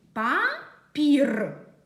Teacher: перший звук п ми його вимовляємо твердо - це твердий приголосний